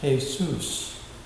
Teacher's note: pronounced Jesus with the accent on the last syllable